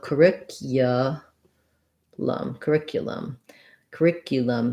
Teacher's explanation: sound sounds like and then this cu has a glide in it a yeah sound